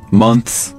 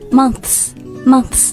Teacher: 就是轻辅音 th, 然后再加上一个复数轻辅音的 s.